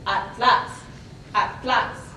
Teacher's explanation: we have the TL consonant cluster in the same syllable, where Spanish typically separates these two. If we look at the example, atlas, atlas, is how it's typically, but in Mexican Spanish, you can hear atlas, atlas.